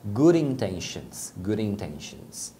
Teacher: Aqui, novamente, acontece do D tá entre vogais, aí você pronuncia como um R